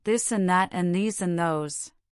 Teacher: Repeat after me, ensuring you maintain that gentle vibration, this and that and these and those. Concentrate on the continuous buzz in your throat as you speak. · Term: voiced